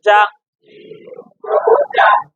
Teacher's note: জিম জিব্বার মাঝখান থেকে শক্ত ভাবে আদায় হবে